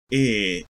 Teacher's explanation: Near close near front unrounded vowel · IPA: ɪ